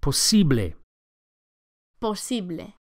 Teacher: The second syllable, the E, is accentuated.